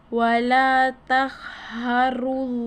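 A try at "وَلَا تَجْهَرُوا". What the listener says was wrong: Taj. Yan ay Jim. Ayusin mo. Yan ay Jim. Wala taj.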